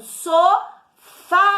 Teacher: sílaba tônica é o fá, é a última